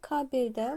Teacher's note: kabeldə vurğu düşür birinci hecayəyə